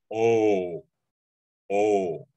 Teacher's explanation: In Samoan, we have a pure O, so it's just O, with making an O with your mouth